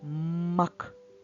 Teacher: перший звук м губки зустрілись разом закрились приголосний звук